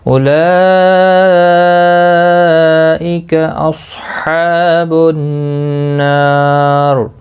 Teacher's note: مد متصل ہے، 4 الف کے برابر کھینچ کر پڑھیں گے ، کا کو کھینچنا نہیں ہے، صاد مستعلیہ ہے، پر پڑھا